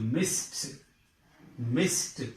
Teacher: The last word, the last sound of the word is s. So to make it, to change it into past tense, you have to use ed. But this ed is pronounced as t.